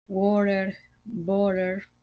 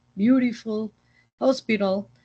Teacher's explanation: cuándo suena como R, pues básicamente es cuando hay una vocal, una T y una vocal